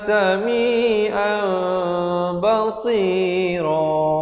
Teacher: Cara bacanya macam ikhfa syafawi tadi, bibirnya hampir bersentuhan saja di antara atas dan bawah dengan kadar 2 harakat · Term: iqlab